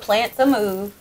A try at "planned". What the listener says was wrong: You plan to move? You said plant.